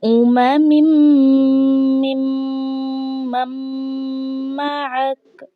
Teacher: ہم نے کاف کو ہلکا سا ظاہر کرنا ہے، کاف کے اوپر کوئی حرکت ہم نے نہیں پڑھنی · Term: وقف